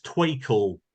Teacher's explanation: some speakers of uh London English don't have an R at all and have W again. So that trial is twe and things like that.